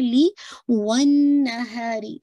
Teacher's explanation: ون اس پہ آپ نے ہولڈ کرنا ہے فار ٹو کاؤنٹ، یہ آپ کا غنہ ہے